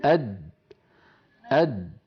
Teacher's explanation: هذه صورة لإنسان ينطق حرف الدال ساكنة من غير قلقلة، فيقول أد، يقول أد. لاحظوا بأن اللسان عندما يصل إلى مخرج الدال يصطدم طرفه بمخرج الدال أد عند تلك الدائرة الزرقاء التي تظهر، فينحبس الصوت خلفها ويؤدي تصادم طرف اللسان مع ما يحاذيه من الحنك الأعلى إلى صوت الدال أد.